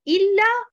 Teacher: on ne place pas l'accentuation sur harakat al-hamza